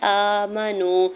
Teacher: حمزہ کے اوپر کھڑی زبر دو حرکت کھینچ کے ادا کریں گے۔ میم کے زبر کو بغیر کھینچے ہوئے ادا کرنا ہے۔ · واو ساکن سے پہلے نون کے اوپر پیش ہے، واو مدہ ہو رہا ہے، دو حرکت کھینچ کے ادا کریں گے